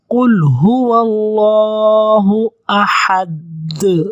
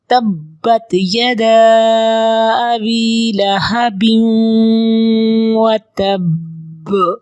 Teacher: اب با کے اوپر قلقلہ کرتے ہیں، تبت یدا ابی لہب وتب، یہ قلقلہ ہے کہ اس کی ڈبل آواز آنی چاہیے ان حروف کی